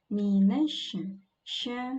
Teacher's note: huruf shin ini tafasyi sifatnya menyebar udara di dalam mulut sehingga sya seperti itu bunyinya · Mi pendek, tipis saja. Mi tersenyum karena di kasroh.